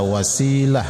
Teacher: Jadi ketika diwakaf ta itu menjadi ha disebut ta marbutah maka dibaca wasilah ya. Jangan wasilata wasilah ketika disambung tidak diwakaf ini tetap menjadi da.